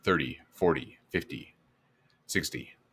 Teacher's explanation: even though it's written 30 40 50 60 we usually say it with a D sound instead of a T sound